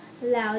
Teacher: two vowels in a single syllable in which the sound begins as one vowel and moves toward another